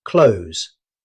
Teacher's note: The th sound usually disappears completely.